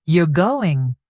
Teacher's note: If you say, You're going, with a falling tone, it's a statement. · if you say, You're going, with a rising tone, it sounds like a question.